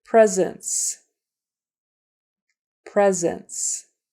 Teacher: the S sounds like a z the C sounds like an S · notice that first s is pronounced like a z so that's kind of a tricky word the S sounds like · Notice the S is spelled with a C. And notice that first S is pronounced like a Z.